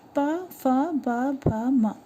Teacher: जब प फ ब भ म उच्चारित करेंगे तो आपके होठ टच हो रहे हैं, तो उसको आप दंत से उच्चारित नहीं कर सकते हैं। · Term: ओष्ठ